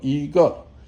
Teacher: remember that 一 turns to second tone. It's first tone first, 一, and then when you have 个 is falling tone.